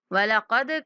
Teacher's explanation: دال پر کلکلا کریں گے